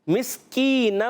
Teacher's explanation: ہا کے نیچے کھڑی زیر ایک الف کھینچنا ہے. مسکینہ, میم کو سین سے ملائیں گے سیٹی کے ساتھ